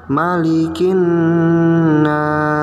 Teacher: pada Nun tasydid yang diberi tanda warna kuning dibacanya didengungkan ya dan ditekan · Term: bacaan ghunnah